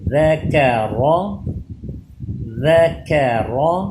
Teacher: یہ دونوں حرف ذال اور کاف باریک ہوں گے، را پہ زبر آ گئی ہے اس لیے یہ پر ہوگا